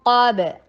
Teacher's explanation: قاف کو ہیوی کرنا ہے، با کے اوپر قلقلہ